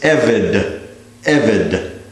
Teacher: one of its first two vowels is a segol, which means we accent the first syllable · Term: segulate noun